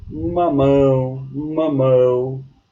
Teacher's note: A sílaba tônica ela está na última sílaba e assim ela é chamada de oxítona